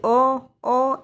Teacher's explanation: जिन स्वरों के उच्चारण में मुख द्वार आधा खुलता है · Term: हाफ ओपन